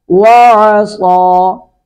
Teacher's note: پڑھیں گے، فَكَذَّبَ، کاف بھی باریک ذال بھی باریک، فَكَذَّبَ وَعَصَىٰ، عین کو حلق سے ادا کریں گے